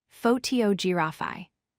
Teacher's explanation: For example, in the word photography, the stress falls on the second syllable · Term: word stress